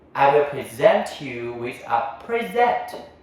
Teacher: Noun gets stressed on first syllable, and verb gets stressed on the second syllable.